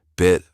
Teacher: Her lips barely moving, the vowel crisp and short.